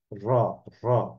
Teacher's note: আমাদের এই র ধ্বনিকে উচ্চারণ করার সময় আমাদের জিহ্বার আগাটা কম্পন লাভ করে বা কম্পিত হয়। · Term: কম্পনজাত ধ্বনি